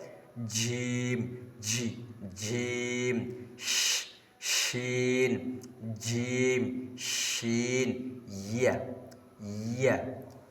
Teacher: জিহ্বার মধ্যখান তার বরাবর উপরে তালের সঙ্গে লাগাইয়া জিম শিন ইয়া উচ্চারিত হয়